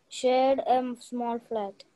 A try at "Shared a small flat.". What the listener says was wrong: Shared a small flat. There is no A. That's it.